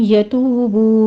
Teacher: توبو میں واو مدہ ہے، 2 کاؤنٹ کر لیجئے